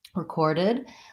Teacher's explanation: you just tighten up the tongue into the ER or and for recorded syllable stress is on the second syllable